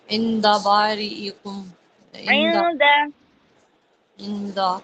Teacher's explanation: نون ساکن کے بعد دال آ رہا ہے تو یہاں پر اخفا ہوگا